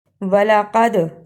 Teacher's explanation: قاف کو موٹا پڑھنا، دال پہ قلقلہ کرنا